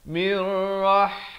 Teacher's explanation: Mir, di sini idgham bila gunnah, masuk tanpa dengung, bukan min tapi mir ya. Mirrah pedas.